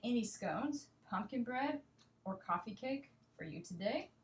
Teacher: intonation here my pronunciation my voice going up and down and i have three options usually my voice will go up on the second option